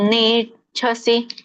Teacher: ನೇಚ್ಛಸಿ ಚ ಒತ್ತಿದ ಮಾಪ್ರಾಣ